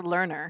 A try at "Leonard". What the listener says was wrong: It's Leonard. There's no R. The only R is at the end.